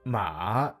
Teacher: Third tone, falling, rising. Ma means horse, said with a dip and rise, like a bounce.